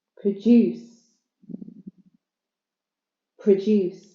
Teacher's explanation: second syllable stress so it's a verb